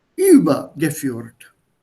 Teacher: your stress will be on the first syllable